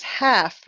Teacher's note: We don't need to say the L. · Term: The L is silent